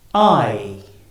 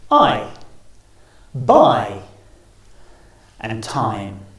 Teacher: So our mouths start wide open and closes as we say the sound. I. Starting on the R and finishing on the E, I.